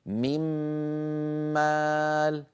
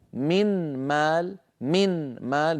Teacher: نون ساكنه بعدها مم بعد ان ادغم النون في في الميم صار النطق بميم مشدده لان النون قد تحولت الى ميم فصار عندي ميم ساكنه وميم متحركه فادمن الميم في الميم فصار